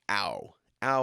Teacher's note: there's a roundness there it has to do with the diphthong ow